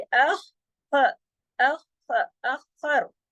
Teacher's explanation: double खा है यहाँ पर तशदीद की वजह से